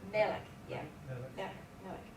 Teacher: you gotta put the accent on the first one